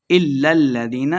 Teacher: إِلَّا الَّذِينَ لام مشدد ہے، ایک لام کو دوسرے لام کے ساتھ ملائیں گے